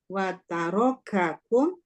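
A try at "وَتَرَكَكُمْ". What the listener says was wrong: Lama. Ulang. Wa tarakakum.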